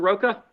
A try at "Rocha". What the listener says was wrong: CH is like ch, rocha. Yes, sir.